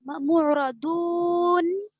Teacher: हरफ मद्दा के बाद नून पर जो सुकून अगर वक्फ की वजह से हो रहा है तो यहाँ पर 3 अलिफ के बराबर खींचकर पढ़ेंगे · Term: मद्दे आरिज वक्फी